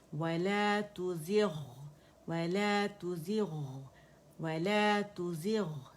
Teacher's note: ساکن ہے غین یعنی موٹا لیٹر ہے، لیکن تفخیم نسبی کا لیٹر ہے اور اس سے پہلے کسرہ آ رہی ہے، تو اسے پڑھا جاتا ہے وَلَا تُزِغْ وَلَا تُزِغْ وَلَا تُزِغْ، ٹھیک ہے.